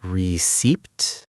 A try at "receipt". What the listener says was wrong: No, no, receipt. You don't say the P.